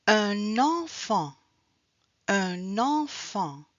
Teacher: un enfant on fait la liaison. On a le son N. So we have to do the link with the N.